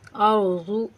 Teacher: ज़ाद को मोटा यानी पुर करके पढ़ेंगे